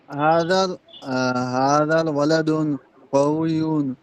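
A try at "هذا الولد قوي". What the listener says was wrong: ওয়ালা দুন হবে না, সবাইকে বলছি যে এখানে আলিফ লাম আছে, ওয়ালা দু হবে। হাযাল ওয়ালাদু, হাযাল ওয়ালাদু।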